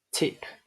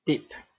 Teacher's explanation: the only difference between t and d is the voicing.